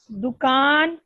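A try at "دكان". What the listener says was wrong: نہیں دکان, کاف پہ دیکھیں, شد ہے, دکان,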